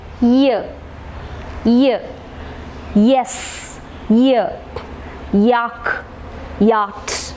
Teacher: Okay, so palatal sound ennu parayumbo enganeyaan produce cheyyundavuka onnu paranju nokiye. The front part of the tongue is raised towards the hard palate and thus produce this sound.